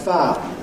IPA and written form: faː (Fire)